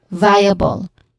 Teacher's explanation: Starting with the first syllable, which is also the stressed syllable, vi, it has a diphthong sound · And then followed by a schwa sound, and then ends with bal, which also has a schwa sound in the middle. So this is viable.